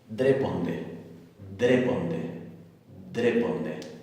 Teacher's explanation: se va a pronunciar como una d oclusiva